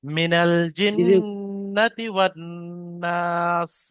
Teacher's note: মিনাল জিন্নাতি ওয়ান নাস। প্রথম নুনটা টান হবে না, নুনের উপরে জাবার আছে, জাবারটি হলো হারাকাত, হারাকাতের পর তাড়াতাড়ি পড়তে হবে